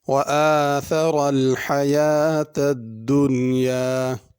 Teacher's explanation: وَآثَرَ الْحَيَاةَ الدُّنْيَا، آثر میں ثا ہے، اس کو سین یا صاد نہیں پڑھنا۔ الحیات میں بڑی ہا ہے، اس کو چھوٹی ہا سے تبدیل کر کے نہ پڑھا جائے